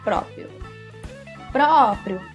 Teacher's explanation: é a sílaba mais forte da palavra próprio o próprio bom então pro é a sílaba tônica